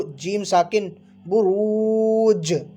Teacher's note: را پر کیا ہے، پیش ہے، اس کو پر پڑھیں گے، با پیش بو، را وا پیش رو، برو، جیم ساکن بروج، اس طرح۔